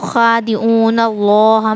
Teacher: لفظ اللہ سے پہلے زبر رہا تو لفظ اللہ کے لام کو پر پڑھیں گے یعنی موٹا پڑھیں